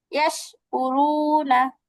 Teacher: জিহ্বার মধ্যখানটা উপরের তালুর সঙ্গে লাগবে। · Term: শিন